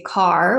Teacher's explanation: In American English, we would say car with a nice strong R.